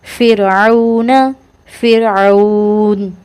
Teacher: فرعون، فر را ساکن ہے، را ساکن سے پہلے زیر ہے تو اس کو باریک کر کے پڑھیں گے